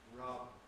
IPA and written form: rʌb (rub)